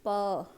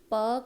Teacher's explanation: प का आप जब उच्चारण करते हैं तो आप उच्चारण करके देखिए, आपके होंठ जो हैं वो आपस में स्पर्श करके हवा को रोकने की कोशिश करते हैं, तब जो आवाज़ जो है वो प जैसी ध्वनि जो है वो हमारे मुंह से बाहर आती है। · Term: स्पर्श व्यंजन